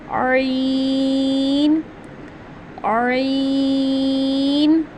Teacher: जो हमारा हमारा हलक है उसके दरमियान वाले हिस्से से हम इसको अदा करते हैं। इसीलिए तो हम जो है वो इसको हल्की लेटर में काउंट करते हैं कि यह खकी लेटर है क्योंकि हम इसको हलक से अदा करते हैं।